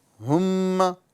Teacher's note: तो जिस मीम के ऊपर तजदीद आ जाए उसे मीम मुशद्द कहते हैं। और मीम मुशद्द को गुना करके पढ़ेंगे। इसमें एक अलिफ का गुना होगा।